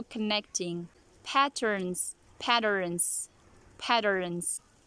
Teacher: you are replacing the letter t with d sound